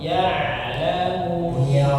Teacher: sekali lagi huruf ainnya dari tengah tenggorokan